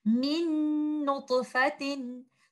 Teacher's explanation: the gunna that you hear is from the second letter noon, and the first letter noon is completely merged into the second letter noon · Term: idgham kamil